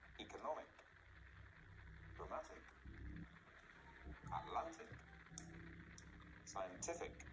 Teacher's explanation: Again, all these words have the stress on the second last syllable.